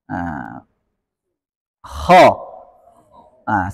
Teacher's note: yang membuat tebal huruf kho adalah terangkatnya pangkal dan bibir tidak ada pengaruhnya